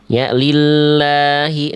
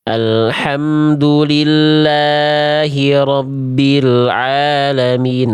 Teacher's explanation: Lnya dibaca dengan kadar panjang dua dua harakat. Huruf yang di atasnya ada fathah tegak dasarnya itu kita sebut dengan mad thobi'i atau mad asli. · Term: mad tabi'i